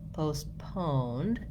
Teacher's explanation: Also, in both versions, we have second syllable stress, which means that we're short on that first syllable, postponed, and longer on the second syllable